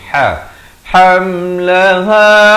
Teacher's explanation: ha bari dhammah di pertengahan kerongkong ni